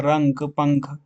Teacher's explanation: अनुस्वार आपका उच्चार करते समय वायु केवल नाक से निकलती है